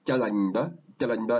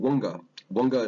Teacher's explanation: the P and the K, they tend to become more like a B and a G when it's next to a nasal sound